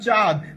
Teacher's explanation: আর এখানে কি ছিল, অ ছিল, এখানে এসে কি হয়েছে, আ হয়েছে। অর্থাৎ এই নাসিক বর্ণের বিলুপ্তির ফলে পূর্বস্বরের বৃদ্ধি ঘটে এবং পুরো শব্দটা আনুনাসিক বা সানুনাসিক হয়। আর যে নাসিক বর্ণের বিলুপ্তি ঘটে সেখানে একটা চন্দ্রবিন্দু চিহ্ন ব্যবহৃত হয়।